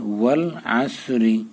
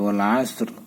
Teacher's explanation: ঠোঁটটা গোল করে ওটা উচ্চারণ করতে হবে, আইনটা চাপাই বলতে হবে, সোরটা মোটা করে বলতে হবে